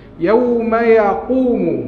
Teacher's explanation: Kalau belakang qaf, angkat dia belakang maka dia bunyi tebal. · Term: qaf tebal